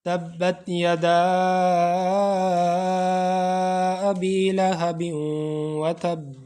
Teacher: ہم مد منفصل کریں گے، یعنی تھوڑا زیادہ کھینچ کے پڑھیں گے